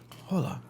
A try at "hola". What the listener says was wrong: They pronounce the H. The H is not silent.